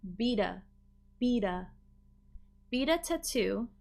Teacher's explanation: we can link and make it a flap t